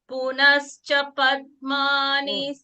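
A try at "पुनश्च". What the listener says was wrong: Not is. Ish. Punascha.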